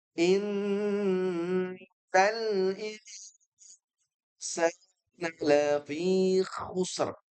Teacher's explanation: Pertama yaitu nun yang bertasydid. In dia punya hukum namanya gunnah, yaitu dengung yang dipanjangkan.